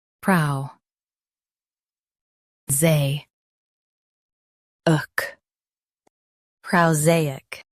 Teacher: Stress zay. Keep uk soft, not hard.